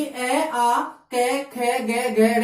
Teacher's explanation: जिन वर्णों के उच्चारण में समास वायु वो कंठ को स्पर्श करके मुख से बाहर निकलती है तो उन्हें क्या कहा जाता है, कंठे वर्ण कहा जाता है